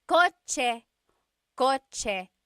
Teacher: The ch sound is a TS combination.